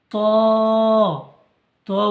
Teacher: জিভের আগা সামনের ওপরের দুই দাঁতের গোড়ার সাথে লাগিয়ে উচ্চারিত হয়